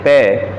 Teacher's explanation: पै इसका ओष्ठ स्थान और स्पृष्ट प्रयत्न दोनों ओष्ठों को मिलाकर बोलना